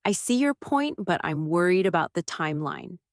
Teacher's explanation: Keep your voice low and steady before the word but. Give it a soft pause. Then land your idea in one clear sentence.